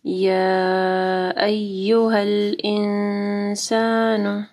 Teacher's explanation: یا کے اوپر دیکھیں یہاں پہ مد ہے، اس کے بعد حمزہ ہے، 4 سے 5 حرکات کے برابر اس کو لمبا کرنا ہے